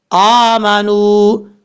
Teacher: حمزہ کے اوپر کھڑا زبر ہے، ایک الف کی مقدار لمبا کر کے پڑھا جائے گا